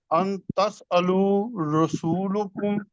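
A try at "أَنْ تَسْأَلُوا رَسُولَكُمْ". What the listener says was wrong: لام کے اوپر زبر، رسولکم جی،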